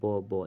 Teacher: उच्चारण स्थान ब जैसे आप बोलते हैं ब ब यानी कि दोनों होट का यानी कि संपर्क होता है यानी कि होट से उच्चारण हो रहा है